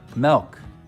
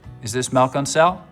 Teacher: some front vowels get lowered before L sounds